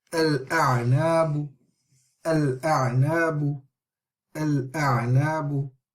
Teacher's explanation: the Hamzat al-Wasl, is being joined onto the lam. And then we are then reading the Hamza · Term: moon letter